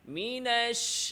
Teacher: শিনের খাওয়া আওয়াজ পরিপূর্ণ জারি, তাফাশি